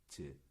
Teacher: 예, 제가 만지면서 발음이 뭉개지는데, 그래서 앞에서 만약에 혀가 이 센 입천장을 닿아서 이쪽에서 소리가 막히는 경우, 그게 즈예요. 즈는 약간 혀 끝이 아니라 양 옆으로 막거든요